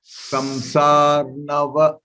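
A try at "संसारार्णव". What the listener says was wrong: No. It is samsararnava. Ra is there.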